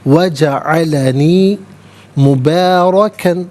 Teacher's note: را پر زبر ہے، را کو پر کر کے پڑھا جائے گا